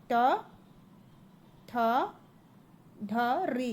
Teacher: यह सब कहां से आते हैं? मूर्धा से निकलते हैं।